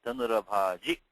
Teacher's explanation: when you have a short vowel at the end, like your Dhanurabhaji, you give it a bit of a hitch, like a fast stop